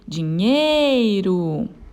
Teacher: A sílaba tônica dela é o nhei